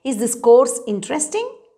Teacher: you must have noticed that i am saying it with a rising tone